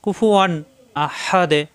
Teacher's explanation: একই অর্থাৎ আলিফের উপরে হরকত আসছে এটা এখন হামজা হামজা আসার কারণে এখানে স্পষ্ট হবে গুন্না হবে না আমরা যদি পড়ি কুফুয়ান ভুল এখানে কোন গুন্না হবে না কুফুয়ান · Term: ইজহার